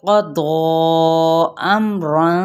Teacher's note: دود بھی حروف متعالیہ میں سے لیکن اوپر الف مدہ کا قائم مقام ہے اور ساتھ میں یہ دیکھیں مد آ رہی ہے تو ہم نے اسے 6 حرکات لمبا کرنا ہے